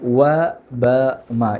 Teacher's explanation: ഇനി അടുത്ത അക്ഷരമാണ് വ ബ മ. ഇവ രണ്ട് ചുണ്ടിൻ്റെ ഇട എന്നാണ് പറയുക. അപ്പോൾ പല ആളുകളും മലയാളത്തിലുള്ള വ എന്നാണ് പറയുക.